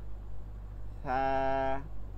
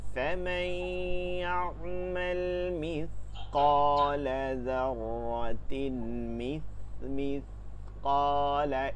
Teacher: জিহ্বার আগা, সামনের উপরের দুই দাঁতের আগা।